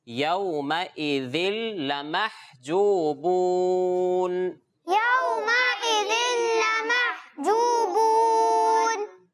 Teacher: زبر آ گیا ہے، تو واو لین کا قاعدہ لگے گا. یہاں پہ واو لین میں کیا ہوتا ہے؟ بغیر کھینچے، بغیر شٹکا دیے نرمی سے پڑھتے ہیں